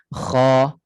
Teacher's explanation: Maknanya dari sudut keliling lidah dia ataupun tengah lidah dia, dia tidak naik. Hanya pangkal lidah sahaja naik. Jadi bunyinya tebal tetapi tidak terlalu tebal. Tebal yang terbuka. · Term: Isti'la yang infitah